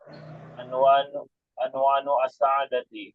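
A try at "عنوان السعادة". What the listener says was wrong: Bukan an, tapi dengan dhammah.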